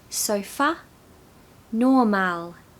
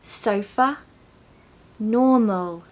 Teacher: you can hear that ah sound instead of the uh and it sounds very different